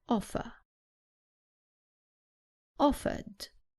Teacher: in British English the r at the end is not pronounced